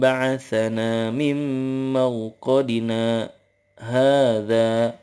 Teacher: Nah, dari mim marqadina ke hadza itu kalau kita bacanya disambung itu harus ada saktahnya, artinya ada jeda sekira 2 harokat tapi kita gak boleh nafas